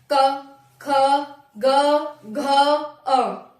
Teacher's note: तो आपको जीभ का बिल्कुल भी प्रयोग नहीं हुआ, आपका ना दांतों का हुआ, सिर्फ यहाँ कंठ से आवाज आई।